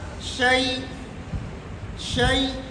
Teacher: اور چوتھی صورت جو ہے نا کیا نام ہے، ساکن ہوگا مشدد، یعنی حمزہ کو یا کر کے یا کا یا میں ادغام کر دینا پھر ساکن کر دینا